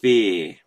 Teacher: So it's like the combined sounds, like the mashed together sounds of two other vowels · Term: diphthong